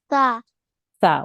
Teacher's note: so your tongue touches the front of your teeth just underneath the front of your top teeth and you make a th th sound a soft th sound